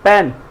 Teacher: एक बार रिपीट करता हूँ कि ए कॉन्सोनेंट जो साउंड है जब हमारा लिप्स टच होगा, जैसे पेन, जो प बोल रहे हैं वो हमारे दोनों लिप्स को टच कर रहा है